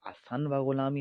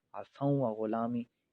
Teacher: حسن جو تھا، نون ساکن کے بعد واو آ رہا تھا، نون کو واو میں تبدیل کیا، واو کو واو میں مدغم کر دیا ، یہ عصوں و غلامی ہو گیا۔ یعنی حسن و غلامی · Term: ادغام